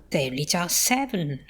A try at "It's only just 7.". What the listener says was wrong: I like that. It's got some intonation in it as well.